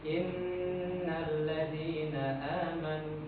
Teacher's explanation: Nah, di sini ada ee yang perlu Bapak harus perhatikan huruf nun bertasydid itu harus ditempo, Pak